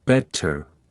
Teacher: Unlike American English, the t is pronounced crisply in British accents. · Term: T sound